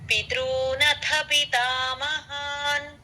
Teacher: స్థితాన్ పార్థః తత్రాపశ్యత్ స్థితాన్ పార్థః తత్రాపశ్యత్ స్థితాన్ పార్థః పితృథ పితృ అండి పితృ తేలిగ్గా చెప్పాలి పితృ అని అలా స్ట్రెస్ రాకూడదు